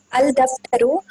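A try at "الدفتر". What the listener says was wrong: It is not al-daftaru, sister. It is ad-daftaru, like ad-diku. ad-daftaru. So that is from al-hurufu shamsiya.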